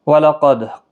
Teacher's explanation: وَلَقَدْ، قاف مستعلیہ ہے، پر پڑھا جائے گا، دال ساکن پر قلقلہ ہوگا